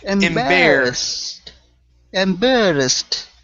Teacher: we want to curve the tongue back to pronounce the r there